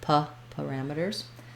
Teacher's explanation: versus a letter A, we would use the schwa